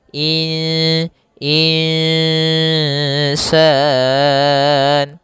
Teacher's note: Panjangkan dulu dengungannya atau panjangan dulu ikhfanya. Panjangkan dulu bacaan gunanya dua harakat in dan itu tipis ke huruf sin insan. · Maka kemudian di sini insan ada nun sukun bertemu dengan alif maka maaf ada nun sukun bertemu dengan huruf sin maka kita namakan dengan bacaan ikhfa. Yaitu secara membacanya itu nunnya kita samarkan kepada huruf sin. Kemudian terdengar suara samar-samarnya in insan insan.